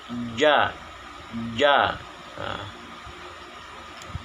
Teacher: nafas ditahan ketika menyebutkan huruf ja, dan suaranya pula agak sedikit ditahan